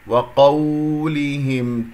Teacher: الواو مرقق، القاف مفخم مرتبة ثانية. انتبهوا إلى الواو وقولهم، أنا طولت صوت الواو قليلا حتى أجعلك تنتبه عليها. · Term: واو لين